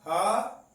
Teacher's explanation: जब बोलते हैं आप हा, तो कहीं न कहीं ऊष्मा अधिक निकलती है। तो ऊष्मा चूंकि अधिक निकलती है, इसके चारों क्या कहते हैं? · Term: ऊष्म व्यंजन